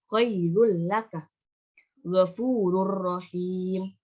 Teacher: memasukkan huruf nun mati atau tanwin ke dalam huruf sesudahnya tanpa disertai dengan suara yang mendengung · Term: idgham bilagunnah